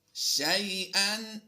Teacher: شین یا زبر شیئا لین ہے، لمبا نہیں کریں گے